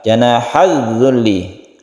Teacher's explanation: Di sini ada idgham syamsiyah, janahaz zulli, alif lam bertemu dengan zal yang tidak dibaca karena sudah masuk ke zal. Idgham artinya masuk ke huruf berikutnya, ke huruf zal.